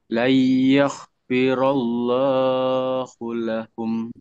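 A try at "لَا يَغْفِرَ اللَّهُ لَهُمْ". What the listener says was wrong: G-nya biasa jangan ada hanya ya. Layar, jangan yah, jangan yah ya, ini G, guru. Layar, yaghfirallahu lahum.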